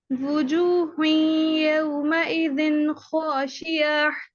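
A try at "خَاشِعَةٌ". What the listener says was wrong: फिर से हा पे जोर हो जा रहा है लेकिन आइन पे नहीं. खाशिआ.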